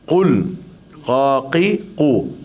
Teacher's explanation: Kul huwa dah cenderung pada kaf tu. Sebenarnya kita kena cenderung pada q.